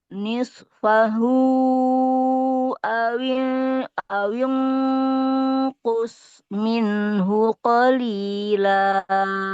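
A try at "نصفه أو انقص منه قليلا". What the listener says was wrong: Oke, bagus.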